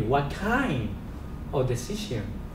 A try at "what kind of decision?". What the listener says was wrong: But see, don't emphasize decision, right? So now you're gonna say, what kind of decision?